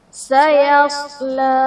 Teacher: صاد حروف مستعلیہ اسے ہم پر پڑھیں گے